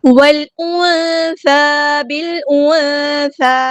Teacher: ہمارا ڈراپ ہو جائے گا، لام یہاں پہ لام قمریہ ہے، نون ساکن پہ اخفا ہو رہا ہے، آواز چھپا دیں گے